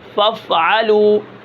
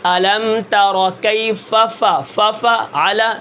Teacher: نرمی کے ساتھ جب ثنایا علیہ کی نوکیں اور یہ نیچے کے ہونٹ کا شکم تری والا حصہ جب آپس میں نرمی کے ساتھ ملائیں گے تو وہاں سے فا ادا ہوگی